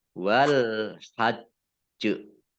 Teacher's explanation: Nah, ini karena jimnya sukun maka menjadi kolkolah ya karena jim sukun, jim itu termasuk huruf kolkolah dibaca memantul ditampakkan pantulannya